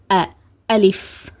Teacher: ஓகேவா அதனால அலிப் இந்த மாதிரிதான் உச்சரிக்கணும். அண்ட் அந்த ஆவை நார்மலா ஆ சொல்லாம அலிப் அலிப் இந்த மாதிரி உச்சரிக்காம ஹம்ஸாவோட சவுண்ட கொடுத்து உச்சரிக்கணும்